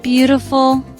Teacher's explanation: Beautiful. 3 syllables. First syllable is stressed.